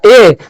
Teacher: जब आप ए बोलिएगा ए, तो कंठ और तालु दोनों का उच्चारण होगा, यानी कि ए का उच्चारण स्थान कंठ प्लस तालु होता है।